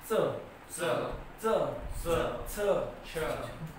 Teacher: जीभ थोडी वर आहे आणि बाकीचा भाग दाताला लागतो. मग या दातातून आणि टाळूतून याचा उच्चार होतो म्हणून याला म्हणतात दंत तालव्य.